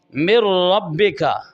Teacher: नून और रा में दाखिल हो रहा है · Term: इदगाम